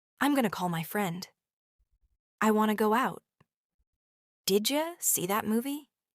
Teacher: want to becomes wanna. Going to becomes gonna. Did you sounds like didja. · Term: link sounds together